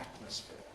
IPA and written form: ˈætməsfɪə (atmosphere)